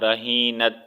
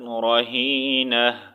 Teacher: جب بھی تا پر ہم وقف کریں گے تو اس کا ساؤنڈ ہم نے ہا میں چینج کرنا ہے